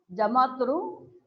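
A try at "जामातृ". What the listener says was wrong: Not Jamatru. Jama. Again, you also, I think, you have a problem of Rikara and Ukara. It is Jamatru, not Jamatru.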